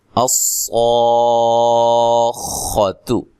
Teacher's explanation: اب اس کلمہ کے اندر صاد کو بھی آپ نے خوب موٹا کرنا ہے, پھر اس کے بعد مد کرنی ہے, مد لازم, پھر خا کو بھی اچھی طرح موٹا ادا کرنا ہے, تا کو باریک پڑھنا ہے, لمبا نہیں کرنا.